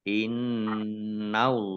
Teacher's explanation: hadzaatum Mustaqim Mari in in nunnya dibaca ya ada tas in tasdidnya ditahan dua harakat Innallaha Allahnya dibaca tebal karena harakat di depannya fathah lam · Allahnya dibaca tebal karena harokat di depannya fathah.